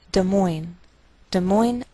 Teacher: Des Moines, Iowa. Note that we treat the name of this capital like one word, and the greater stress is on the second part, so we say Des Moines, Iowa.